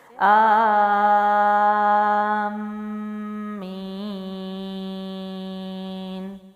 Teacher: تو یہاں پر مد کو لمبا کر کے میم پہ غنہ کریں گے اور پھر آگے یا مد ہے، نون وقف کریں گے تو اس کو بھی 3 الف لمبا کریں گے۔